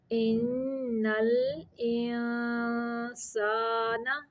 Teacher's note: ان پہ نون مشدد کا غنہ ہے